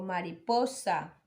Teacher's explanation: ¿cuál es la sílaba tónica? En po, mariposa